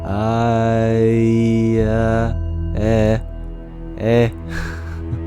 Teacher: we've secretly said another vowel, halfway between A and E.